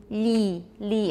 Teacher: the tip of your tongue will be on your alveolar ridge so for e you'll say li and that will be quite palatalized